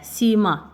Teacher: sima sözündə sima ilk heca uzanır